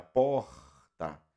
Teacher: Então, quando eu falo porta, o R, ele traz um ruído lá na minha garganta